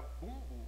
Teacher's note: Agora, bumbo, eu não tenho M. Ele só jogou o U para a fossa nasal. Ou seja, ele nasalizou o U e eu tenho 5 letras e 4 fonemas, não é?